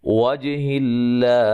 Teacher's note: لفظ اللہ کو باریک پڑھیں گے، اس سے پہلے حرف پر زیر ہے